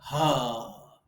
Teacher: ह बोलते समय ना तो हमारी जीभ कंठ में टकराती है ना जीभ यहां तालू में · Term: काकल्य